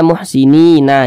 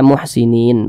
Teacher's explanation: panjang maka huruf tersebut harus kita sukunkan harus kita matikan ini kita berwakaf tepat di huruf nun huruf nun tidak dibaca panjang ya sehingganya kita sukunkan atau kita matikan